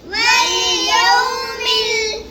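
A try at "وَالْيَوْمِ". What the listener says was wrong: यौ को लंबा नहीं करना, इधर वॉलिन है, वॉलिन को झटका भी नहीं देते और लंबा भी नहीं कहते। यौ जैसे वौ साकिन से पहले या के ऊपर ज़बर है तो वॉलिन। वल्यौमिल मौऊद।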